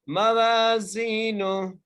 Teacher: خفت موازینو، میم کے اوپر زبر ہے، واو کے ساتھ الف مدہ ہے، اس لیے واو کو ایک الف کی مقدار کھینچ کے پڑھیں گے. زا کے ساتھ یا مدہ ہے، اس لیے زا کو ایک الف کی مقدار کھینچ کے پڑھیں گے